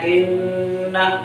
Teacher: اب یہاں پر ہمیں ایک الف کے برابر غنہ کرنا ہے، ناک میں بال لے آ کر ٹھہرنا ہے، ان، کیا؟ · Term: غنہ زمانی